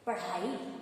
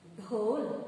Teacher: जब हम ढ का उच्चारण करते हैं तो हमारी जिह्वा शीघ्रता से नीचे गिर जाती है